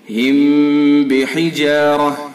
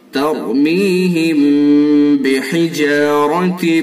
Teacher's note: میم ساکن کے بعد با ہے، تو اس کے اندر اخفا ہوگا، اور اخفا یہ کون سے اخفا ہے؟ اخفا شفوی یعنی اخفا میم ساکن کا، اس کے اندر بھی غنہ ہوگا۔